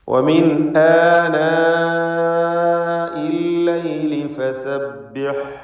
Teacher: ആനാ ഈ പദത്തിലുള്ള ദീർഘം മദ് മുത്തസിൽ വാജിബാണ്. അലിഫിനെ നിർബന്ധമായും 4-5 ഹറക്കത്തിൻ്റെ അളവിൽ ദീർഘിപ്പിക്കണം.